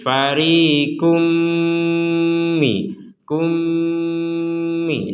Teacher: kita masukkan tanwinnya ini ke huruf mim sehingga menjadi fariqum mi, kummi disertai dengungan